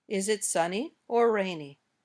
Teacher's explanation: choice between two or more things in this case the internation goes up on the first choice and down at the end